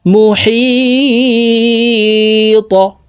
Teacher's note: ত কলকলার হরফ উপরের দিকে ধাবিত করে ধাক্কা দিয়ে সাকিন করে ফেলব,